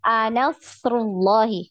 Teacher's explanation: Jangan an-nasrullah. Tidak ada tasydid di huruf nun ya.